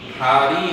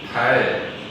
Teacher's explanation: 사실 우리가 R 발음을 발음을 못하는 게 아니라 모음 사이에 오는 리을 발음은 R 발음으로 발음하거든.